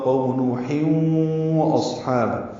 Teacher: تنوین کے بعد واو آنے کی وجہ سے ادغام ہوگا